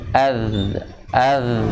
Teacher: Kalau ad itu syiddah, tapi kalau rohawah az, az, jadi mengalir, udaranya mengalir, bukan udara, apa namanya, suaranya mengalir, bukan udara, tapi suaranya mengalir.